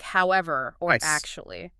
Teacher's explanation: those discourse markers often use a characteristic fall-rise intonation to signal, a shift or that more is coming.